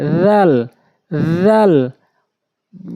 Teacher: রাল একদম হালকা করে জিহ্বার আগা দাঁতের আগায়